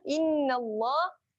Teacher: Okay, nun wajibul gunnah. Innallah dengung.